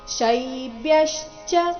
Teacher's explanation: ಮುಂದೆ ಅರ್ಧ ಬ ಮತ್ತೆ ಪೂರ್ತಿ ಯ ಈ ಸಂಯುಕ್ತಾಕ್ಷರ ಬಂದಿದೆ ಶೈಬ್ಯಶ್ಚ ಅಲ್ಲಿ ಬ್ಯ ಮೇಲೆನು ಆಘಾತ ಬರಬೇಕು ಮುಂದೆ ಚ ಎಂಬ ಸಂಯುಕ್ತಾಕ್ಷರ ಬಂದ ಕಾರಣ